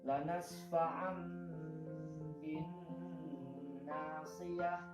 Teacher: apabila nun sukun bertemu dengan huruf ba, maka menjadi mim dan ditahan 2 harokat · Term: iklab